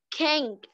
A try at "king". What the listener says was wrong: King. We don't. We don't pronounce the letter G in this word. Don't say king. King. King. King. Stop air in your mouth. Don't push air out in your mouth. Stop air in this word. King.